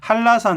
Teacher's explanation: 니은이 리을로 바뀝니다. 여기서 보면 한라산 할 때 니은이 리을로 바뀝니다.